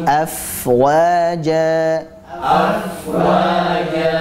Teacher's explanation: fnya kita alirkan karena Fa memiliki sifat rohah dan juga hams dari segi suara dan nafas dia sama-sama mengalir